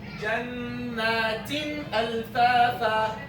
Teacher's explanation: Jannatin, tin, there's ghunna. But it is a short, normal ghunna. Why? Because the tanween and the noon, they have a short ghunna.